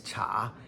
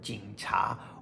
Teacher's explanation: second tone is this cha, as in jing cha, or police.